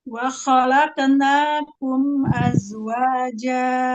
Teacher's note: kolkola pada kof itu tebalkan. Kolkola mengikuti hurufnya.